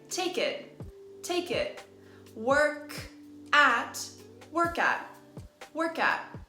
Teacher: we carry the consonant sound over to the following word